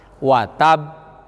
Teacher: Ditahan dulu. Tahan dulu. Tasdid dulu, baru mantul. Karena huruf ba-nya kol-kolah. Iya. Karena sifat ba termasuk sifat kol-kolah.